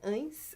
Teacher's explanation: Esse A nasalizado, ele é quase um O. Ele fica entre o an e o on.